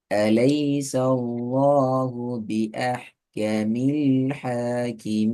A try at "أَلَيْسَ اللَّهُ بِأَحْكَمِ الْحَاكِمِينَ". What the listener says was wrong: கொஞ்சம் ஸ்பீடை கண்ட்ரோல் பண்ணணுமா? உங்களோட ஸ்பீட் கூட,